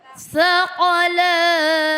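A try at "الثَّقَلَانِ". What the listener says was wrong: Masih kedengaran S-nya. Sakolan. Ayyuhal sakolan. Qafnya qolan sakolan. Jangan sampai ini bukan huruf sin. Tapi sakolan. Nah, nanti kalau misalkan sudah seperti makhorijul hurufnya, nanti kan kalau di ngeluarin hurufnya kudu pas, ya Bu ya. Kalau nggak pas nanti artinya berbeda.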